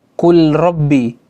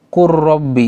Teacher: seakan-akan lam itu tidak ada dan huruf ro itu bertasydid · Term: idgham